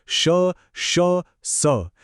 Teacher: यांना उष्मे किंवा घर्षक म्हणतात. का? कारण यांच्या उच्चारात हवेच्या घर्षणाने उष्णता निर्माण होते